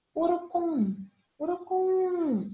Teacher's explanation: Não é acentuado, mas quando eu chamo eu percebo que a última sílaba eu me prolongo mais nela. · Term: oxítona